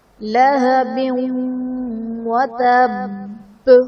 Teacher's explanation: لہب میں دو زیر کی تنوین کے بعد حروف یرملون میں سے واو ہے تو یہاں پر ادغام مع الغنہ کا قاعدہ ہوگا، اور وتب میں با حرف قلقلہ مشدد ہے، یہاں پر خوب جمع کیا جائے گا اور وقف کی صورت میں حرکت ختم ہو جائے گی اور تشدید باقی رہے گی۔